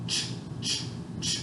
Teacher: And so, like for example, a CH sound, ch, ch, ch. I have to breathe out, but my vocal cords don't vibrate.